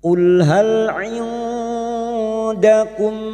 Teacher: Lam sukun cukup masuk tanpa dipantulkan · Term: tawalud